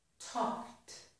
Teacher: So when I have a verb whose last sound is k and I add ed, that ed will sound like t.